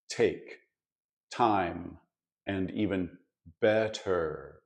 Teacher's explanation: in many London accents a tea sound isn't quite as crisp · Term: sloppy te sound